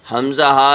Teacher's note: حمزہ ہا یہ آپ کا شروع حلق سے نکلتا ہے، بالکل سادہ نکلے گا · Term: حروف حلقی